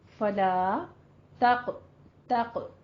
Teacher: فلا کو الف مدہ ہے منہ کھول کے ادا کریں. فلا تق قوف ہے یہاں پہ پر پڑھتے ہوئے قلقلہ کرنا ہے, ہر میں را کو پر پڑھنا ہے.